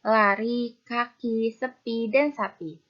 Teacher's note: posisi rahang atas dengan posisi lidah di bagian depan ada pada bunyi I